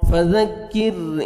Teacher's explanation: ذال کو نرمی سے ادا کریں گے کاف کو باریک پڑھنا ہے